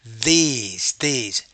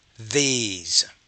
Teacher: it's a high front tense vowel